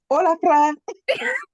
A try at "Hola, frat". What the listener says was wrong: Yeah, you got to roll the R a little bit.